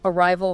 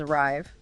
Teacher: arrival has that softer vowel sound before the R, almost neutral, while arrive. That has a long I sound right at the start.